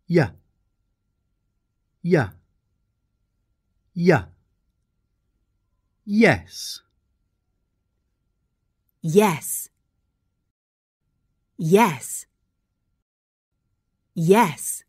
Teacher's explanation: y is formed with a gentler, gliding action